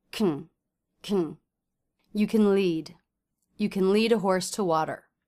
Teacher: can is a helping verb, so we don't want to say can. We instead want to reduce that word to can. You can lead.